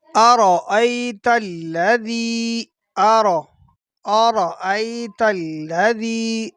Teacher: را کو پر پڑھنا ہے اور اس کے ساتھ ذال جو ہے اس کو نرم پڑھنا ہے